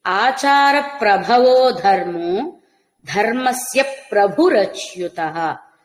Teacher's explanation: ప్రభవో అన్నా ప్రభురచ్యుత పలికిన మహాప్రాణ భకారాలు స్పష్టంగా రావాలి, అఘాత ప్రయోగంతో సహితంగా